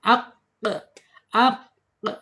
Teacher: ada di asyidah ya tertahan ketika dia sukun